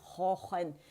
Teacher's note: खौ जो है आपको पता है कि ये अदनुल हल्क से अदा होता है, और ज़बान का जो जड़ है, इसके लिए ज़बान की जड़ नरम तालु से लगती है।